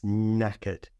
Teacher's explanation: I didn't pronounce the R at all, just knackered.